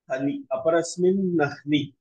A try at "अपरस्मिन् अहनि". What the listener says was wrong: आहनि अह्नि इति न भवति आहनि तत् पृथक् अस्ति किल आहनि आहनि इति अह शब्दस्य सप्तमी रूपमस्ति अपरस्मिन् इत्यपि सप्तमी रूपम् अपरस्मिन् अहनि अपरस्मिन् अहनि आगमः पूर्वनिमित्तं किम्